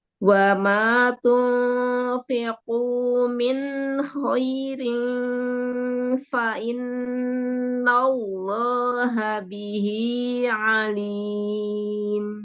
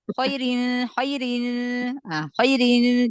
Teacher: Lin itu ada zamannya. Dia lebih dari satu harakat tetapi enggak sampai dua harakat ya. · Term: Huruf lin